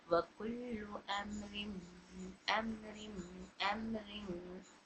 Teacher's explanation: इदगाम की कितनी किस्में हैं, 2, उसमें से है या व मीम नून, मतलब यहाँ इदगाम मअल गुन्ना का फ़ायदा हो रहा है तो तनवीन नून को हम मीम में दाखिल करके पढ़ेंगे